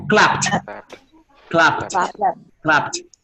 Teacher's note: You have to make the p and the t simultaneously.